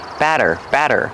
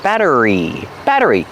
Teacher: The double T changes to a fast D.